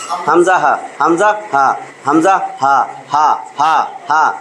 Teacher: এক নম্বর মাখরাজ আসবে একদম হলকের একদম শুরু হইতে